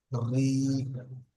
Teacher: যদি র এর নিচে জের থাকে তাহলে র বারিক পড়তে হয়, অর্থাৎ মুখটা গোল না করে এমনি পড়তে হবে